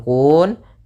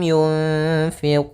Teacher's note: Kemudian pada lafal quun di sini ada mad arid di sukun yaitu kita boleh memanjangkan kunnya dua harakat, boleh empat harakat dan boleh enam harakat